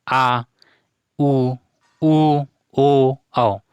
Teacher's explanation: पश्च स्वर। उच्चारण करने पर जीभ का पीछे का भाग ऊपर उठता है